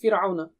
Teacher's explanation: را ساکینہ سے پہلے زیر ہو تو را کو باریک پڑھیں گے